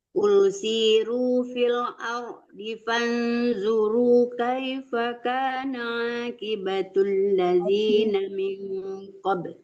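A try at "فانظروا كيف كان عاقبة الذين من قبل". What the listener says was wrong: Ya, qafnya ditebalkan. Kaifa kana aqi ya, jangan ki ya, jangan kaf kecil, itu kaf besar, tebal hurufnya.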